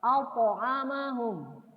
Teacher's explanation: Jadi qaf dan po dia harus tebal.